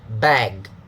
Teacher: one syllable, must be stressed with a high pitch